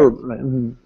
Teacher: in American English, you don't pronounce this H.